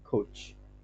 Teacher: the tongue is slightly behind the alveolar ridge with a sound that is a plosive directly followed by a fricative